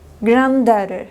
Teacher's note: Se lee la segunda D, más no la primera.